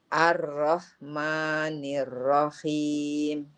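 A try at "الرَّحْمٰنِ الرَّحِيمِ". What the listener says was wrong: Nah, sekarang Ibu PR-nya itu huruf ro-nya tinggal kurang tebal saja. Kurang tebal suaranya. Suara ro tebal itu ar-ro. Ar-ro. Ar-ro. Nah, gimana Ustadz caranya biar roknya tebal? Pangkal lidahnya dinaikkan. Ya, pangkal lidahnya dinaikkan. Ya, ini gimana cara menaikkan pangkal lidah? Tadi, kita baca huruf E. E, E, E. Kalau kita baca E, pangkal lidah kita naik. Nah, saat baca E, masukkan huruf ro-nya. R, R, R, begitu.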